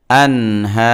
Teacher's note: তো মদের পরে আমরা ওকফ করলে 3 আলিফ লম্বা করা যায়